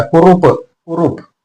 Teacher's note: र थोडासा लांबला क पटकन उच्चारला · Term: दीर्घ